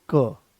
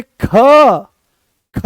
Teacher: तो जैसे ही हमने क बोला, कोई ज्यादा जोर नहीं लगाना पड़ा, आराम से वो आ गया है क, कम प्राणवायु की आवश्यकता पड़ी, आराम से आपने उसको बोल दिया। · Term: अल्प प्राण